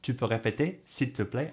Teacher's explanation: it's like the statement form of you can repeat, but you go up at the end and it makes it a question.